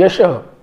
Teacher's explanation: तर तो विसर्ग आहे ज्याचा उच्चार ह असा होतो, जो कंठ्य आहे. तर या ठिकाणी यशः अधिक म्हणजे धन, म्हणजे पहिल्या पदाचा शेवटचा वर्ण हा विसर्ग आहे आणि त्याच्या मागे यश हा शब्द असल्यामुळं अ आलेला आहे, श अधिक अ, आणि पुढे विसर्ग आलाय.